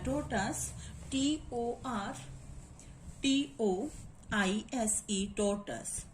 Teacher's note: we will put the primary stress on the first syllable